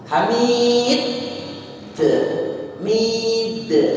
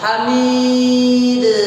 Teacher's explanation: dal itu punya sifat namanya qalqalah, juga punya sifat namanya syiddah. Tadi syiddahnya dulu, kemudian qalqalah.